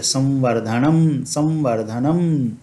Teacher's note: जब वकार उपस्थित हो तो हम म के समान करेंगे, संवर्धनम, संवर्धनम। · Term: अनुस्वार का उच्चारण